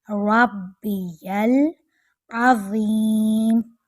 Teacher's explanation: عین حلق کے درمیان سے لیکن باریک